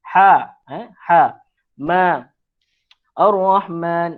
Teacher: Alif kecil. Alif kecil tu itu huruf mad lah. Mad asli. Kena panjangkan dua harakat.